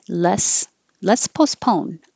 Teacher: Let's, you don't have to say the T.